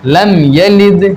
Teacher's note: تو یہاں میم میں اظہار شفوی ہوگا، یعنی غنہ نہیں کریں گے، پڑھیں گے لم یلد، سمپل پڑھنا ہمیں۔